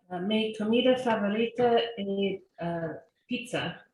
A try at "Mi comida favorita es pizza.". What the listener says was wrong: Make sure to pronounce your S's. S, pizza.